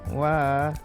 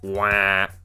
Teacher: But if you pronounce that through your nose like wah, it means to eliminate. And even the W is nasal. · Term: nasalization